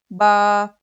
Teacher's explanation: दोनों होठों के गीले हिस्से से बा अदा होता है।